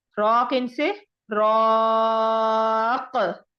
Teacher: रॉ को 3 से 4 अलिफ के बराबर लंबा भी करेंगे और काफ पर कलकला भी करेंगे। रॉकिन से रॉक, ये कलकला हमने किया।